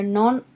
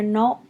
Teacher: Notice in non, sometimes you'll hear the N, but a lot of times it'll get swallowed up and you won't hear the N at the end of the word. It'll just be more like no, no.